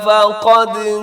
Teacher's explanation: فقد میں قاف موٹا ہے، دال قلقلہ ہے